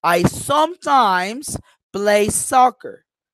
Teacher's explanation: I am going like down up down up okay the main stress in the sentence is sometimes why maybe · the main stress in the sentence is sometimes why maybe because in my context I'm talking about frequency okay